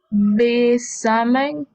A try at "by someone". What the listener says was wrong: No be. By someone. By, again, by someone. By someone